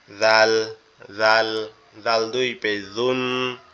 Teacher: জিহ্বার আগা সামনে দুই দাঁতের আগার সঙ্গে লাগবে লেগে উচ্চারিত হবে